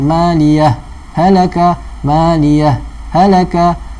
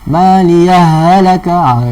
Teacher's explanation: Tak boleh baca tasydid lah, senang kata. Baca saktah tak boleh dalam keadaan kita memasukkan atau kita baca tasydid.